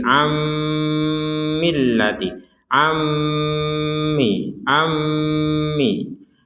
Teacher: Nun sukunnya dimasukkan ke mim sehingga menjadi ammillati ammi ammi Jangan lupa dengungan jangan lupa